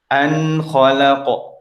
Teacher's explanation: An khalaqa, ya, tidak ada ziyadatul gunnah, ya, gunanya jangan sampai ditambah-tambah. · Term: nun sukun